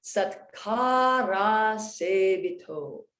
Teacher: So here, I don't say Satkara Asevita, because it's awkward. I say Satkara Sevito, and also that A turns to an O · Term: vowel blends